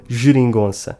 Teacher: the E, which is unstressed, reads neither É nor Ê, but /ɨ/ · Before an E or an I, the letter G is pronounced /ʒ/, like the J in João